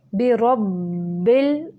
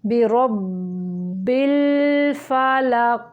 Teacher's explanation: रा को बा के साथ मिलाते हुए थोड़ी देर रुकेंगे क्योंकि बा मुशद्दद है और मुशद्दद हरफ के अंदर 2 हुरूफ होते हैं।